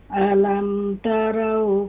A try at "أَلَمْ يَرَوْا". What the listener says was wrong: علم یرو، یا ہے تا نہیں ہے،